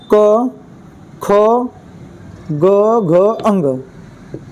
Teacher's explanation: क वर्ग का उच्चारण स्थान होता है कंठ